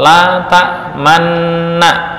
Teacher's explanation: mengumpulkan bibir ketika bersamaan dengan membaca sukun pada huruf yang diidgamkan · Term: isymam